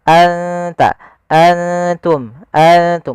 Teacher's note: nunnya kita samarkan ke huruf ta langsung, seakan-akan kita melafalkan huruf ta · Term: ikhfa